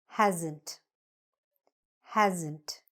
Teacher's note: There is an S, but it sounds a little bit more like a Z sound.